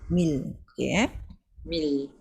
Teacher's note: Kita kata rahawah betul juga. Dia memang ada rahawah sikit. Dia ada ekor suara tapi dia tak banyak. So dia kategori dia tawasud.